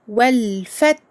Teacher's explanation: Ici, pour le ta, nous devons entendre le petit hams, le petit air qui sort avec ce ta sakin. Et pour le ha, vous avez dû entendre que je prolonge sa durée, car il s'agit également d'une lettre qui a la caractéristique de la rakhawa, donc écoulement du son.